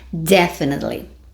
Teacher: sílaba tônica stress na primeira sílaba